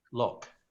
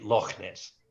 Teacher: a guttural sound at the back of your throat